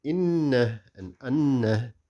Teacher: there are shaddas on the noon. So we read it with ghunna and the noon will be doubled.